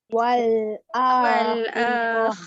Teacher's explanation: Okay, di akhir perkataan tak berhenti, jangan baca dia jadi huruf ta, kena tukar kepada huruf ha sebab dia ta yang tertutup. Asal perkataan wal akhirati, tapi ti tu tak ada bunyi. Dia jadi wal akhirah. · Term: ta marbutah